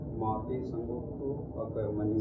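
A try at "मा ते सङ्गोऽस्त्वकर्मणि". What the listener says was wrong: संगोस्तु यानी वो संगोस्त्वकर्मणि, वो वह बन गया ना, तो संधि हो गई। माते संगोस्त्वकर्मणि।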